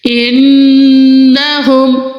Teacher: انہم، ادھر نون مشدد ہے، ہم نون مشدد پہ غنہ کریں گے